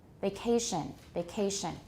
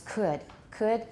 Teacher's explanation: it's still stressed it's still aspirated but it's not as strongly aspirated as could